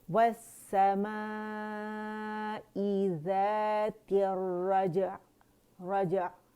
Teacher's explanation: عین کو توسط دینا ہے ہم نے، اسے جھٹکا نہیں دینا. عین کی آواز جو ہے تھوڑی سی چلے گی کیونکہ وہ بین بین لیٹر میں سے، لن عمر میں سے ہے اور اس میں توسط ہوتا ہے، درمیانی آواز چلتی ہے، ٹھیک ہے.